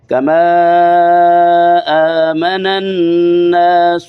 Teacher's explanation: آگے وَإِذَا قِيلَ لَهُمْ آمِنُوا كَمَا آمِنُوا قیل لهم آمنوا کما، اس کو بھی لانگ کریں گے، لمبا کریں گے، کیونکہ آمنا کے حمزہ کی وجہ سے کما کی الف کے اوپر مد ہے، 2.5-3 الف جتنا مد منفصل ہے، اس کو لمبا کریں گے.